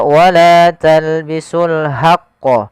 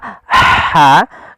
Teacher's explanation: Ya, yang seperti ini jangan dibaca wala talbisul haqqo, tapi dia ha posisinya adalah kita bagaimana menyempurnakan huruf ha kecil yaitu kita mengeluarkan dari tengah tenggorokan kita ha disertai dengan adanya nafas